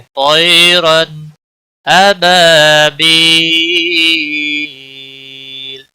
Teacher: رن را کے اوپر دو زبر ہے اس لیے موٹا پڑا جائے گا. رن تنوین کے بعد حروف حلقی کا حرف آیا ہے، یہاں پر اظہار ہوگا. اس اظہار کو اظہار حلقی کہتے ہیں. · ابا الف مدہ ہے، ایک الف کے برابر کھینچ کر پڑھیں گے.